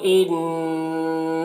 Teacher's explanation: ان نون مشدد غنہ کے ساتھ پڑھیں گے